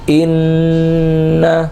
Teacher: اس طرح پڑھیں گے کہ نون کو نہ کھینچا جائے بلکہ اس کے غننے کو کھینچا جائے